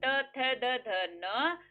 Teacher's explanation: अब त को बोल के देखो, जीभ सीधी दांत पे जाएगी